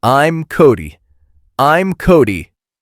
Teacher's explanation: And notice how the M sound slides right into the start of your name. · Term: linking